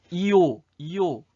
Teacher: 이오 할 때 처음엔 안 그랬는데 입술이 평평했다가 동그랗게 오므러집니다.